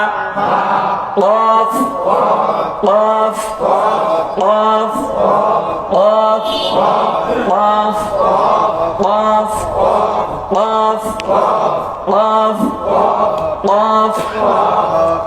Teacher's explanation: এই অফটা জিহ্বার গোড়া তার বরাবর উপরে তালুর সঙ্গে লাগায়া